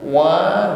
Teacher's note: wa bibir dihimpun ke depan